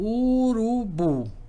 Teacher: falo fala aqui das palavras da língua portuguesa elas vão ser oxítonas cuja sílaba mais forte é a última